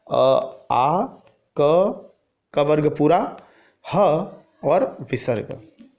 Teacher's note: अकुह विसर्जनीयानां कंठः। अ यानी अ आ, कु यानी कवर्ग, अ आ कवर्ग, ह और विसर्ग, इन सब का उच्चारण स्थान जो है वो कंठ से होता है। और अगर कोई कहे कि कंठ्य वर्ण कौन से हैं, कंठ्य वर्ण, तो कंठ्य वर्ण वो वर्ण होते हैं जो कंठ से बोले जाते हैं।